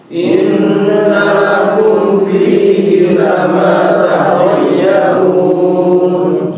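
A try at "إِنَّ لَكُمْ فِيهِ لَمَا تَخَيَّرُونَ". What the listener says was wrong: Nah, huruf ya, Bapak, itu seperti ditekan sedikit ya. Jangan sampai dia malah kayak idgham. Takhayyarun, takhayyarun. Nah, itu idgham. Ya, takhayyarun. Enggak ada penekanan.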